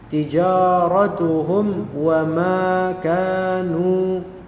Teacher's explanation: Tijaratuhum, rabihat tijaratuhum wa ma. Lihat di sini hum, mimnya mati ketemu dengan waw, izhar syafawi.